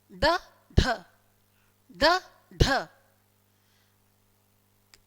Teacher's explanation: हमारी जीभ मुर्दा को स्पर्श करके झटके से नीचे आएगी और ऐसे लगेगा जैसे जीभ उछल रही है। बोलकर देखिए, ड ढ ड ढ।